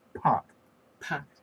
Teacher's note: when you say pot, if you put your hand in front of your face, you feel a puff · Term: aspiration